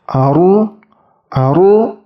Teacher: Kemudian ketika disukunkan, contohnya Aru, Aru, Ra sukunnya itu bentuk mulutnya sedikit dimonyongkan. Ingat, pangkal lidahnya tetap mendekati langit-langit.